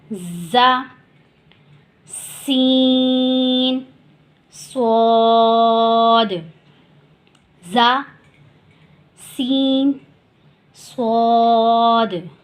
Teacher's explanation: سختی اور سیٹی دونوں سے ادا ہوں گے، ان میں سختی بھی ہوگی، سیٹی بھی ہوگی، اور یہ نرمی والے حروف سے بالکل اپوزٹ ہوں گے، الگ ہوں گے، جیسے کہ زا، سین، صاد، زا، سین، صاد۔